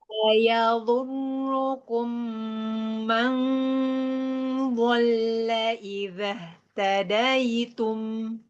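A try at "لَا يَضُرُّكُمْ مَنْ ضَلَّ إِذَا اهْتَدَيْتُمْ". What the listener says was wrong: Nah, suara daripada nun sukunnya nggak boleh jelas. Bayangin kan tadi samar-samar, ya kan? jadi nggak boleh man, nggak boleh mau, nggak boleh gitu. Harus samar dia.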